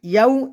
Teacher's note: ইয়াউ এখানে এটা লিনের হরফ, দ্রুত পড়তে হবে।